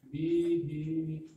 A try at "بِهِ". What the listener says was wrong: B-nya jangan panjang, hi-nya aja. Baik, bihi.